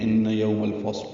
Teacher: ان یوم الفصل، ان میں نون مشدد ہے، اس میں غنہ ہے